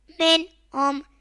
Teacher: نون ساکن کے بعد حروف حلقی میں سے ہا آ رہا ہے تو اظہار ہوگا، یعنی گنہ نہیں کریں گے